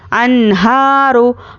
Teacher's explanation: नून साकिन के बाद हुरूफ हलक़ी आया है, तो हम यहाँ पर नून को ज़ाहिर करके जल्द पढ़ेंगे। · हा पर खड़ा ज़बर है, खड़ा ज़बर बराबर है अलिफ मद्दा के, एक अलिफ के बराबर खींचकर पढ़ेंगे। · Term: इजहार